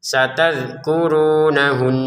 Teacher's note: Runnya dua harakat. Untuk nahunna di sini kita dengungin dua harakat juga walaupun kita berhenti.